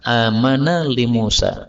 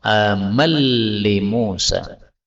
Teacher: Nun ketemu lam ini bisa idgham